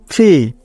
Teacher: উপরের ঠোঁট ও নিচের ঠোঁট লাগিয়ে ধাক্কা দিয়ে উচ্চারণ করতে হবে